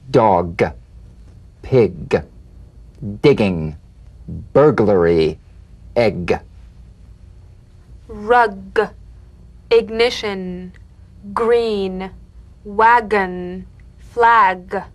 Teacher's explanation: you'll feel a crisp tap and a voiced pulsation of the back of the tongue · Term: drum beat G